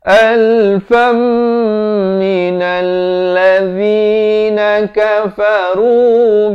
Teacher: Alfam, daripada alfan, bila bertemu mim, tanwin bertemu mim, idgham bi gunnah, masuk beserta dengung.